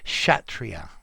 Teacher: the word chatria is pronounced as if the word begins with an sh